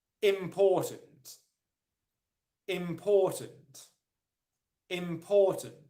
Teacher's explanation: it is the second syllable where the main stress is